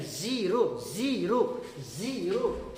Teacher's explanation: जीरो ना करके जीरो का कहेंगे, इसमें झनकार आएगी। जो जेड जब बोलेंगे तो इसमें झनकार आएगी, ना कि सीधा सीधी आएगा।